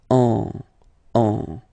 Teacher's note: you don't listen or you don't hear, sorry, any N in my pronunciation